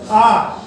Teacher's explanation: जो आ स्वर है वह विव्रत स्वर कहलाता है। इसका उच्चारण करने पर तालवा पूरा खुल जाता है।